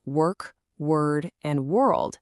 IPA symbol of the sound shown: ɜː